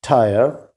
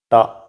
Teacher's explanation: in english the first sound is an alveolar sound an aspirated alveolar sound tyre but in malayalam the first sound is ta which is a retroflex sound